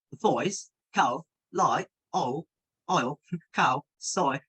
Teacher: So you kind of notice that there's a glide at the end of the sound. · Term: diphthongs